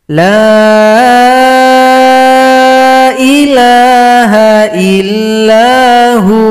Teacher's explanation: Kalau berhenti pada huwa, wawunya disukunkan, hu panjang dua ketukan